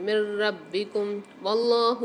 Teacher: اللہ کے نام سے پہلے زبر ہوگی تو ہم اس کو موٹا کر کے پڑھیں گے